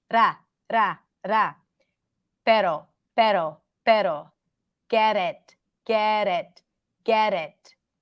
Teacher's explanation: The flap T is a sound that actually is pronounced like the short R in Spanish.